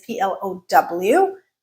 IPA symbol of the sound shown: aʊ